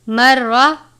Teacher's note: مرہ، را کے اوپر تشدید یعنی شد کی علامت ہے، زبر ہے اس لیے را کو پر پڑھیں گے، لیکن را کو لمبا نہیں کرنا